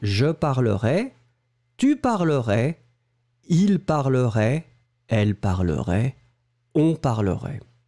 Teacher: nous écrivons ces terminaisons de façon différente, mais nous allons prononcer A-I-S et A-I-T de la même façon. Donc finalement, pour ces trois personnes, c'est la même forme phonétique, parlerai.